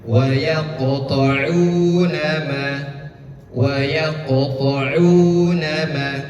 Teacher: Karena huruf qaf ini memiliki sifat yang namanya isti'la. Isti'la itu terangkat. Jadi dia berat hurufnya qaf. Agak berat.